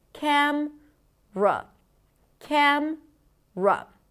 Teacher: Camera. However, the middle syllable is often deleted, and then we reduce it to just cam-ra